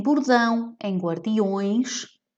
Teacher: Então, em avelã, em bordão, em guardiões, portanto, em avelã nós vamos ter uma vogal nasal, em bordão e guardiões nós vamos ter ditongos nasais